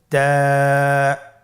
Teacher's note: তা হরফটি বারিক হরফ এবং এক আলিফ টেনে পড়তে হবে · জিহ্বার আগা সামনের উপরের দুই দাঁতের গোড়ার সঙ্গে লাগিয়ে উচ্চারিত হয়